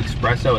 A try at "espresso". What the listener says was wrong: Can you stop saying espresso? There's espresso. No X. Where's the X? It's espresso. Say it with me. S. Espresso. Espresso.